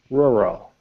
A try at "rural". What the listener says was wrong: It kind of sounds like you've got marbles in your mouth when you say this. It's almost like you're slurring, but it's rural.